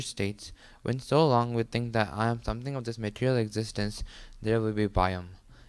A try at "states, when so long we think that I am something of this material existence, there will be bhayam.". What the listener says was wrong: Don't read so fast. read slower and try and pronounce every word clearly.